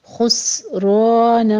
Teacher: سین کے اوپر ہمس ہوگا، سین ساکن ہے، سیٹی کی آواز کے ساتھ اس کو ادا کریں گے